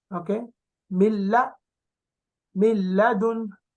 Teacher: like a lam with shadda only. There is no noon. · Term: idgham without gunna